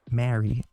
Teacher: the first Mary, as in to marry someone, is actually pronounced with the A in cat